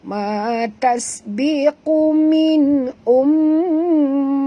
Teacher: sini mim bertasydid, wajib dengung, 2 harakat, wajib al-gunah